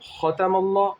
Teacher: خا کو موٹا پڑھیں گے، اللہ کا لام پر ہوگا اس لیے کہ اللہ کے لام سے پہلے زبر ہے